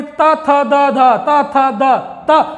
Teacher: त, थ, द, ध में भी त, थ, द, ध, त, थ, द, त, जीभ नहीं है ये, जीभ जो है दोनों दांतों के बीच में अड़ रही है